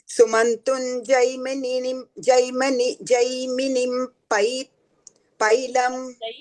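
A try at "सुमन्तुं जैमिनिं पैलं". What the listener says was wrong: You have Jai, it's Jau, Jaumini.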